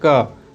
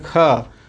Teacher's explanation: ज़्यादा हवा निकलने का तात्पर्य है कि जैसे हम लोग बोलते हैं क, तो क जब बोलते हैं तो इसमें कम मात्रा में हवा निकलती है, लेकिन जब बोलते हैं ख तो ज़्यादा मात्रा में हवा निकलती है। तो इसी को महाप्राण कहा गया है।